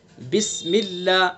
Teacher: اللہ کے لام کو باریک پڑھیں گے چونکہ اللہ کے لام سے پہلے زیر ہے